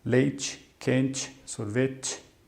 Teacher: a letra E no final tende a ter um som de I